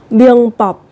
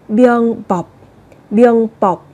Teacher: Theo sau của nó là một phụ âm bờ. Thì các bạn sẽ đọc gấp đôi phụ âm lên, sẽ là biêng bọc.